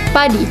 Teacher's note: Padi memiliki bunyi lepas pada awal kata